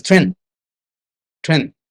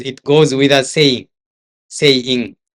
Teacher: he had this Chinese habit of not pronouncing the last consonant, like G or D, when these consonants come at the end of the word. For example, the word like trend, T-R-E-N-D, only comes out as trend. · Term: Chinese accent